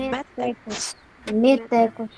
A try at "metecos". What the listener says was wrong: Então tem acento não, tá? Não é métecos, metecos, não tem acento.